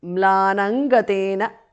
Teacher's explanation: because of sandhi anuswara changes to nga there